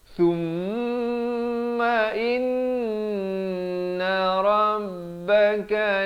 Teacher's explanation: Bukan sum, jangan baca sum, bukan sum. Sa baris dhammah bunyi su, bukan bunyi so, bunyi su. Bila bertemu mim jadi sum, dua harakat dengungkan. Setiap kali jumpa mim sabdu ataupun nun yang bertanda sabdu ini, jangan lupa wajibul gunnah, wajib dengung.